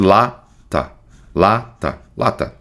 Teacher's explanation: Aqui, ó, vogal fraca. A primeira vogal a gente fala mais forte